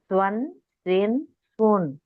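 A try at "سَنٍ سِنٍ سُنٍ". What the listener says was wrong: వావు రాకూడదు, స్వా రాకూడదు, స్వా రాకూడదు. సన్ సిన్ సున్.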